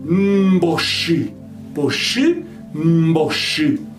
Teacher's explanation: O P vai se tornar mbe · vai começar nasal e terminar oral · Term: Distensão